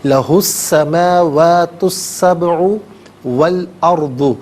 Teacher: تینوں مقامات میں درمیان میں سے الف یعنی حمزہ کو حذف کیا جائے گا · سبع میں با ساکن ہے لیکن حرف قلقلہ ہے تو آواز لوٹتی ہوئی محسوس ہونی چاہیے